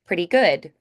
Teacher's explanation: So when we have pretty cat, we might do more of the t because we like to match sounds in the phrase, but here we have good with that d. So it would be pretty common to hear pretty good with that d and d again. · You'll also hear people do more of a D, pretty good, especially in those casual settings.